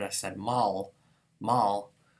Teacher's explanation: But if I accidentally said mal, like if I was a Russian speaker learning Albanian and I'm used to putting this la at there, or maybe even an English speaker where I'm used to the velarized L at the end of a word